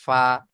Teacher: নিচের ঠোটের ভিজে অংশ এবং সামনের উপরের দুই দাঁতের আগার সাথে লেগে উচ্চারণ হবে ফা